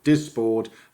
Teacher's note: first syllable is weakened and there is the clipping so dysport the first syllable is more or less clipped the s stays with a stressed syllable · it's a second syllable stress the first syllable is weakened and there is the clipping so dysport the first syllable is more or less clipped the